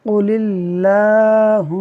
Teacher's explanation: میم مشدد میں ہمیشہ غنہ ہوتا ہے، ناک میں لے جا کر پڑھیں گے